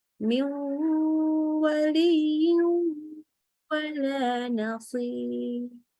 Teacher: langsung lebur ke huruf wawu dengan ditambah gunnah. Ingat, gunnah artinya mengalir melalui hidung suaranya. · nun sukun ketemu wa, contohnya ya langsung lebur ke huruf wawu dengan ditambah gunnah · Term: idgham bil gunnah